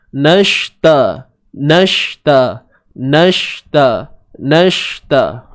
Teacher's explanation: Kemudian na, nun baris atas. Na ni masuk terus pada shin yang mati di sini, shin yang sukun.